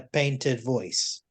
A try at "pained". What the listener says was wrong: In a pained voice. Pained, not painted.